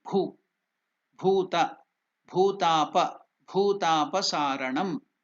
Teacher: It is not the first bhu, alpa prana. It is mahaprana. You are using more energy.